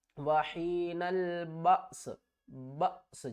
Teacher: بأس جھٹکا دیں گے اور آگے سین کی آواز آ جائے گی